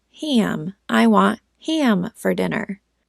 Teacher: We would make it a whiny a and say ham.